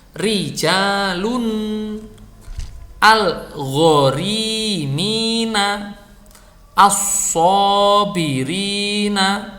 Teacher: Nah, kalau ro itu berharokat kasroh maka dia dibaca tipis. Dan ro itu kalau dibaca tipis itu berarti dia tidak mencucu. Artinya lidahnya itu tidak naik, lidahnya turun.